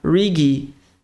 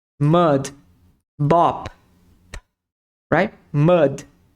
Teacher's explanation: o d é seco mudo